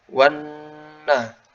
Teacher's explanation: ada lam syamsiyah ya, dan dia ada huruf nun, berarti ada gunnahnya.